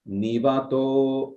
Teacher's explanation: in Rig Veda, the svarita on a long vowel, for example, this word was nivato. So this to was svarita on a long vowel.